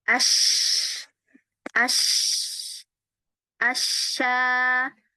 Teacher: Nah, suara desis itu, ya, itulah yang disebut tafasyi. Ya, menyebarnya suara huruf shin dari pusat makhraj, jadi dari tengah lidah, menyebar, membentur gigi-gigi atas dan bawah.